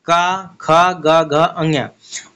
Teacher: क वर्ग यानी क ख ग घ अञ और छोटा आ बड़ा आ और ह और विसर्ग ये सभी कहां से इसका उच्चारण होता है कंठ से होता है